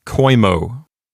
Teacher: So when you first look at the word coemo, you might think to yourself, the O and the E form a diphthong, so I'll pronounce it koimo.